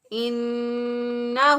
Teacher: ناک میں ایک الف کے برابر گنہ کی آواز کو ٹھہراتے ہوئے ادا کریں گے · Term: نون مشدد